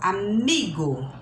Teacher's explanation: Ele não é acentuado, mas a sílaba forte é a penúltima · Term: paroxítonas